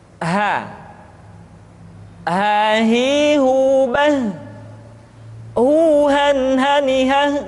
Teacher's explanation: Selanjutnya huruf H dikeluarkan dari tenggorokan yang terjauh, sama seperti kita mengucapkan huruf A.